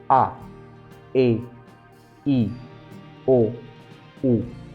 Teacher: You would notice that when I called these 5 vowels, the one that actually made my lips come out the most was U